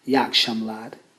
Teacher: It's as if that second vowel E is not really being pronounced.